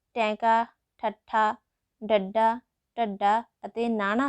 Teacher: ਜਿਨ੍ਹਾਂ ਧੁਨੀਆਂ ਦੇ ਉਚਾਰਨ ਸਮੇਂ ਜੀਭ ਮੂੰਹ ਦੇ ਵਿੱਚ ਉਲਟ ਹੁੰਦੀ ਹੈ, ਉਸ ਨੂੰ ਉਲਟ ਜੀਬੀ ਧੁਨੀਆਂ ਕਿਹਾ ਜਾਂਦਾ ਹੈ।